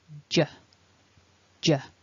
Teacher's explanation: And then as I release, as I let the tongue drop, I make the sound and I vibrate my throat at the same time. J, J. So the noise is made when the tongue lowers away from the top of the mouth. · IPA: /ʤ/